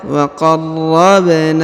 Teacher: Huruf na dipanjangkan 2 harokat karena terdapat alif kecil.